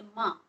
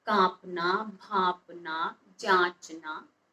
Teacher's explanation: जैसे माँ, माँ शब्द को बोलते में आपकी नाक और मुख दोनों से हवा एक साथ बाहर निकलती है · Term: अनुनासिक